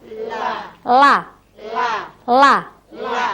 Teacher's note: ini ujung lidah ini adalah di tepian gusi, belakang gigi seri atas, ya. Jadi di tepian sini, la. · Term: lam biasa